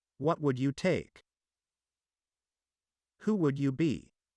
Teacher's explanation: when we're having a du sound followed by the Y sound so we will say J it will turn to be a j sound